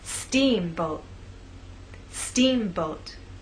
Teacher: making the first part of the word louder, longer, and at a higher pitch. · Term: stressed part